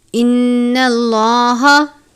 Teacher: نون مشدد پر غنہ کرتے ہیں، لام سے پہلے زبر ہے، لام کو پر پڑھیں گے